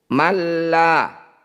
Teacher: malla nun sukun bertemu huruf lam disebut bacaan Idgham bila ghunah bunyi Nun sukunnya langsung masukkan pada lam tidak usah dengung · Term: idgham bila gunnah